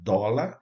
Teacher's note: Então a vogal O é aberto, vai com o acento agudo · O café vai com o som aberto